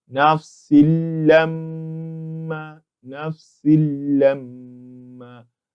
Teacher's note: The letter that comes after it is a letter lam, and that's a letter of al-idgham bi ghayri ghunnah, meaning we'll be entering the Nuun Saakinah in this tanween into the lam, but without a ghunnah. So that explains why we said nafsil lamma, nafsil lamma, as if there is no tanween there.